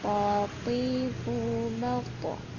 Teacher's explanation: Nah, huruf ta sukunnya ini dipantulkan. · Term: qalqalah